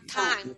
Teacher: Gente, fica anasalado, né? Porque é um M no final